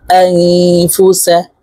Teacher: همزه نون زبر ان نون ساكنه পরে اكفر حرف فارس তাই এই নুনকে নাকের ভিতরে লুকাইয়া গুণার সহিত পড়ব।